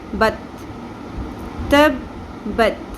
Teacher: تا کو باریک پڑھیں گے، تو نہیں پڑھنا ورنہ وہ پر کرنے سے تو بن جائے گا، تبدیلی ہے حرف ہو جائے گا۔